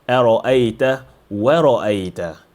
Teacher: we have ra, a heavy letter that falls between two light letters. If we are not careful, we say ara'ayta, we say ara'ayta.